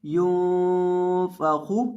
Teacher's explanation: फा का मखरज है निचले होंठ का वस्त जब सामने वाले ऊपर के दो दांतों के किनारे से लगता है तो फा अदा होता है और खौ को मोटा पढ़ा जाता है।